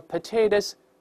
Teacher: 因为▁potato▁后面的▁o▁又发成元音弱化，读快之后▁o▁变成▁a